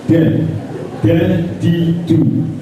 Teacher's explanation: ta itu sama ujung lidah terkena pangkal gigi muka yang atas d dan da juga tidak dibaca tebal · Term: Dal